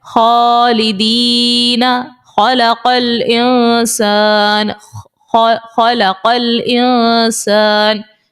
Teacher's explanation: خا بھی اوپر والے حلق سے ہی نکلے گا.